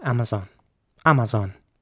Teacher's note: the a at the beginning is pronounced like an Ah and the a in the middle as well